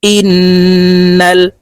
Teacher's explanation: হামজাহ নুন জের ইন ওয়াজিব গুন্না হরকতের বামে নুনের উপরে তাসদি আছে তাই এই হামজা নুনের সাথে গুন্নার সহিত পড়বো